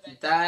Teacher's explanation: زبان کی نوک ثناولی کی جڑ سے